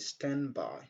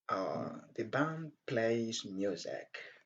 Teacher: Donc, on ne prononce pas clairement le son D, on rejette le son D.